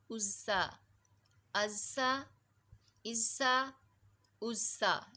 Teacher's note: حمزہ زا پیش از، زا زبر زا، ازا، ازا، ازا، ازا۔ یہ صفیریہ حروف ہے، سیٹی کے ساتھ زا نے نکلنا ہے۔